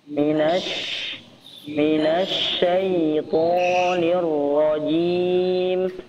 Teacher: huruf Sya diperjelas Sya ada tersebarnya udara